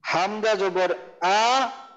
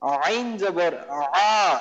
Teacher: এই হামজাটা হলো আমাদের হলকের শুরু থেকে উচ্চারণ হয় হামজা, আইন হলো আমাদের হলকের মাঝখান থেকে